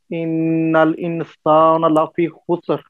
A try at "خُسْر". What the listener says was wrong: خُسر، دیکھیں یہاں پہ سین ہی ہے، यहाँ पे सीन ही है, वल असर में स्वाद है, वल असर उसके बाद इन्नल इंसान सीन है, इन्नल इंसान लफी खुसर, ये दोनों सीन है, ये नॉर्मल है, इन्नल इंसान लफी